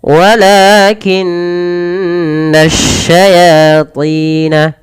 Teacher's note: Tahankan suara nun karena dia ada bacaan gunnah pada lafal nun berharakat tasydid.